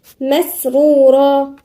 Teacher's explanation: مسرورا، والراء هنا مفخمة